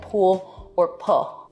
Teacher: that's an L turning into a vowel in a word like pool or pull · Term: l vocalization, L vocalization